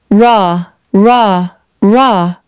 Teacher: It's like a low growl. You should feel the vibration in the middle of your tongue and in your throat, not at the front of your mouth. · The tip of the tongue curls up slightly in the middle of your mouth, pointing towards the roof of your mouth, but not touching.